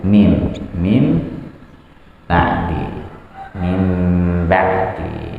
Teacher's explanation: nun sukunnya nanti ketika dibaca tidak seperti min ba'di tapi dirubah menjadi seakan-akan dia mim ba'di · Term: iqlab